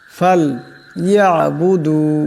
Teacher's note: এখানে আইন আছে, আওয়াজটা গলা থেকে আনতে হবে।